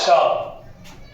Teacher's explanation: मूर्धन्य श का उच्चारण स्थान मूर्धा होता है